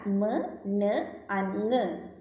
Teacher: Soft പാലറ്റ് lowered ആകുന്നതിന് ഫലമായിട്ട് എയർ മൗത്തിലൂടെ escape ചെയ്യില്ല. Then the airstream passes through the nasal passage and the nasal sounds are produced. ആ സമയത്ത് നോസിലൂടെ മാത്രമേ അല്ലെങ്കിൽ നേസൽ പാസേജിലൂടെ മാത്രമേ എയർ പാസ് ചെയ്യുന്നുള്ളൂ.